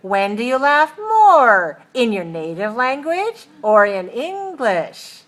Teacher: we have a rising on the first choice and a falling on the second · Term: choice question